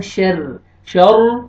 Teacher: را مشدد ہے لیکن را نیچ کسرہ ہے را کو آپ نے باریک کر کے پڑھنا ہے